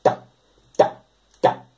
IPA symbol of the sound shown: cʰ